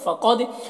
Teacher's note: قاف کو پر پڑھنا ہے